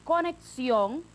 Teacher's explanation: izquierda en esa última sílaba por ejemplo en esta palabra conexión esa última sílaba sión es la que está acentuada también se llama sílaba tónica la que tiene la mayor fuerza